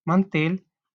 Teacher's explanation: la mayor fuerza de voz la lleva en tel